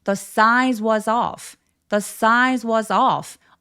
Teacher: off의 강세를 또렷하게 주는 게 필요하고요. 턱을 길게 만들어서 off라고 길게 표현해 주세요.